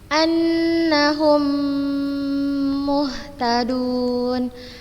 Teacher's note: mim yang pertama diidghamkan ke mim yang kedua dengan tempo gunnah yang dipanjangkan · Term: idgham mimi